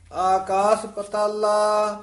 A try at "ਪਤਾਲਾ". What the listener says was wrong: ਇਹਨੂੰ ਪਾਤਾਲਾ ਨਹੀਂ ਕਹਿਣਾ, ਪਤਾਲਾ ਬੋਲਣਾ।